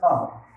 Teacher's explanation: জিহ্বার গোড়া তালুর সাথে লাগিয়ে উচ্চারিত হয়